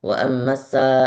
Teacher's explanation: huruf-huruf sin apabila dia waqaf atau tasydid maka biarkan desisnya keluar.